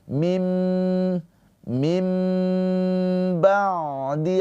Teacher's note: ain sukun mempunyai sifat tawassut, yaitu ada aliran suara sedikit.